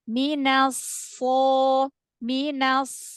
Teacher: huruf istila yang berharakat fathah setelahnya Alif itu tebal ya paling tebal paling tafkhim